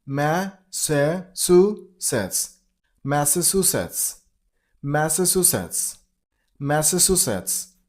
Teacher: you gotta stress on the third syllable.